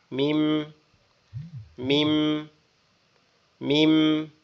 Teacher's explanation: প্রথম হালকা ঠোঁটটা ফাঁক হয়ে আবার একসাথে লেগে থাকবে।